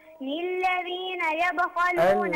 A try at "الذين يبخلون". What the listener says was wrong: توبة الذين يبخلون not للذين okay